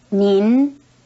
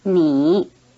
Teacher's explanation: First, the polite word has a final N sound, nin, while the plain word doesn't, ni. Second, the polite word is in the rising tone, nin, while the plain word is in the low tone, ni.